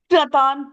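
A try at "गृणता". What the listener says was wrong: And the ich and the h வந்து கொஞ்சம் silent அந்த இடத்துல, right? So it becomes grinnata. And the s it's, you're right, half ha இருக்கு. Say grihnata, அது கொஞ்சம் h is little bit of a silent h அந்த இடத்துல. You don't have to say grih.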